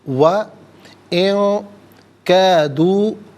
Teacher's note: وَإِن كَادُوا، ان میں نون ساکن ہے، اور نون ساکن کے بعد حرف اخفا کاف آ رہا ہے، تو ناظرین نون ساکن کو اخفا کے ساتھ پڑھیں گے۔ اخفا کہتے ہیں ناک میں آواز لے جا کر گنگنانا۔